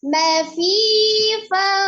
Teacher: bibir bawah bagian dalam bertemu dengan ujung gigi seri bagian atas